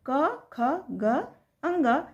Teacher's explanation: कहते हैं क्योंकि वे कंठ से इसकी उच्चारण की जाती है क वर्ग के जो वर्ण होते हैं वह कंठ को स्पर्श करते हुए निकलती है इसीलिए इसे हम कंठ वर्ण कहते हैं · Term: कंठ्य वर्ण